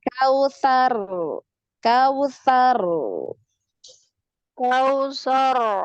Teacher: jadi sekali getarannya sekali kemudian ngalir suaranya